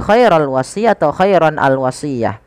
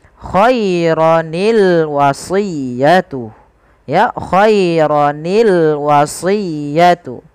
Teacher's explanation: sukun yang pertama dikasrohkan sehingga berubah menjadi khaironi. Sehingga kita membaca lafal khairon al-wasiyah bukan lagi khairul wasiyah atau khairon al-wasiyah, tapi dibaca dengan khaironil wasiyatu. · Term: iltiqa'us sakinain, iltiqus sakinain